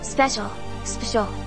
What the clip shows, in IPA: ˈspɛʃəl